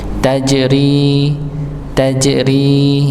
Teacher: Tajri dipantulkan huruf jimnya karena dia sifat pada huruf jim ketika sukun yaitu qalqalah maka dipantulkan tajri rinya dibaca dua harakat dengan menipiskan suara